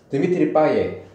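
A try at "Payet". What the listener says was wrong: 여러 가지가 있는 게 이것도 발음 논쟁에 또 빠에도 주는데 파예트예래. 파예트. 그러니까 T를 발음을 한대. 파옛. 그러니까 파예가 아니라 파옛이라는 거지. 이 T를 아니고 T를 발음을 한대. 왜냐면 일반적으로는 그 뒤에 있는 이런 식의 그 마지막 자음을 발음하지 않아. 프랑스에서 보면.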